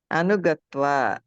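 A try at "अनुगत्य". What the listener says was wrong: అనుగత్య. మీరు తేడా ఏంటంటే ఇప్పుడు త్వా ప్రత్యయాంతాలో వా వినిపిస్తుంది, ఈ లెప్ ప్రత్యయాంతాల్లో మీకు వినిపిస్తుంది.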